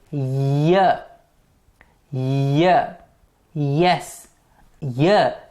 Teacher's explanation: the front of the tongue is the active articulator and the hard palate is the passive articulator for example yeah yeah yes yeah is a palatal sound yeah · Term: palatal consonants